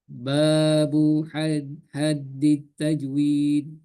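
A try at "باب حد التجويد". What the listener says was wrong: Dalnya bertasdid. Haddit, haddi, haddi. Dalnya bertasdid.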